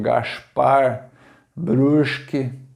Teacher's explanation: é um S assim meio arrastado e com som de X